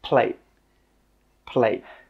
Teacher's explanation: With that final T sound, we stop the air from coming out. We don't say plate, t, no, we say plate.